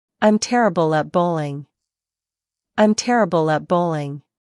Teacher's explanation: In I'm terrible at, the T in terrible can be soft. And at bowling links together, a bowling almost